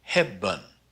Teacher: it falls in an unstressed syllable, so we call it the mute E, even though it's not really muted, but it's pronounced as an sound.